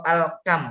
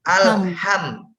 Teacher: H itu bersih. Jadi bukan ada getaran seperti KH atau kho, tapi bersih. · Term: huruf H